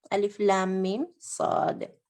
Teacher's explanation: میم اور صاد کے درمیان کوئی بھی قاعدہ نہیں ہے، اظہار شفوی ہے. تو یعنی میم کو ظاہر کریں گے، کلیئر پڑھیں گے